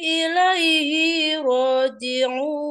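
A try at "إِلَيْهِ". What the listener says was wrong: Ilaihi, hinya enggak panjang? Ringankan is.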